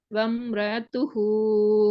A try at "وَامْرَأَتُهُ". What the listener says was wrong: ஆத்து போகுது வருது இல்லையே. ஏட உச்சரிப்பு வாரம் எல்லா இடத்துலயும் நீங்க கொஞ்சம் நிதானமாக அவசரம் இல்லாம ஏட உச்சரிப்போட டார்கெட் பண்ணுங்க, அல்லது வராது, கஷ்டம். நீங்க அதை மறந்துடுறீங்க, அப்படித்தானே? அது உங்களோட அந்த ஃப்ளோக்கு உங்களோட விடுது இல்ல. வம்ரா வம்ரா துஹு வம்ரா தான் வருது.